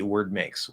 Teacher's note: You're stopping the D. You don't have to push out the D. It's a lot easier.